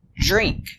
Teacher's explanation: DR makes a J sound like in jump. So make the sound J.